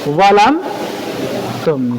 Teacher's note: Zal tipis. Kemudian bertemu dengan dha yang tebal. Namun sifat tipis pada zal dihilangkan. Kenapa? Dimasukkan kepada dha. Jadi cara bacanya langsung ditebalkan.